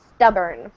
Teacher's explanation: the r are English or at least in American English Eng the r is very strong so we don't really hear the O